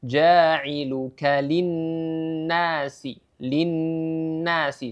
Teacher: ada Mad thi'i dengan dua harakat sama ya J cara membacanya jailuka linasi linnasi sama-sama dua harakat